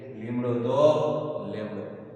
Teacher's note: ઈ ને સ્થાને એ બોલે